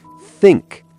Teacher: Put the tip of your tongue gently between your teeth and blow air softly. For the soft TH, like think, the sound is airy.